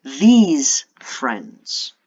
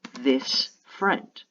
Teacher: these is pronounced with um a long e sound and a z whereas this is pronounced more like accented with an s sound